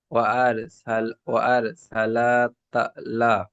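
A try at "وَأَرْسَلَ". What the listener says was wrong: ওয়ার সালা, লাম টান হবে না, লামের উপর চাবার আছে।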